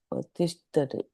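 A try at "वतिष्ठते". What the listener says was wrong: I'm saying ta, but actually it's tha.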